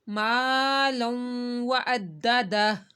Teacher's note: یہ دیکھیں الف ساکن سے پہلے الف ہے اور اس سے پہلے زبر آ رہی ہے، تو الف مدہ کرنا ہے، ما کو لمبا کرنا ہے، مالا۔ دو زبر یعنی تنوین کے بعد وو آ رہا ہے، تو یہاں پہ ہم نے گنہ کرنا ہے